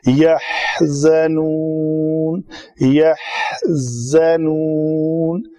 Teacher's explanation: ہا کے لیے منہ زیادہ کھولا، اس کے بعد زار ہے، فوراً منہ کو بند، دانتوں کو جوڑا آپس میں، پیچھے سے زبان ٹکرائی